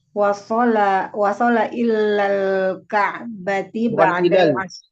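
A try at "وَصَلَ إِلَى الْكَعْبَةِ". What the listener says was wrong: Lamnya bukan illa tapi wasala ilal ka'bati.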